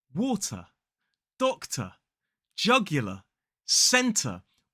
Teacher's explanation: So obviously today's lesson is taught in a British RP accent, and that's really important to note because this part really relates to British RP. Commonly words that end in ER, AR, OR, or RE, that end sound end in a schwa.